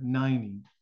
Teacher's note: more of a soft D sound in there, not a T